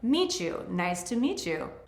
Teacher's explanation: In the words meet you, the T and the Y sounds blend together into ch. There is no CH there, but that's what it sounds like. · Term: assimilation